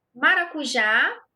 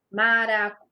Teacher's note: olha aqui o som aberto no já. Maracujá. Então, acento aqui no A, som aberto.